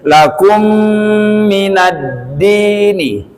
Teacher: Contoh, syara'alakum, mim mati bertemu dengan mim itu dibaca dengung